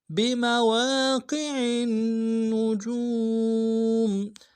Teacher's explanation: عین کو موٹا ادا کرنا ہے، قوف کو موٹا ادا کرنا ہے